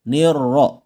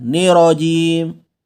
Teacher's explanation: huruf ra di kata ar-rajim dia bertasdid ya. Gandakan bunyinya, double.